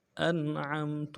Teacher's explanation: انعمت میں حمزہ کو نون کے ساتھ ملانا ہے، نون ساکن ہے، یہاں پہ اظہار کے ساتھ پڑھیں گے، عین کو میم کے ساتھ ملانا ہے، تا کو نون سے ادا کرنا ہے۔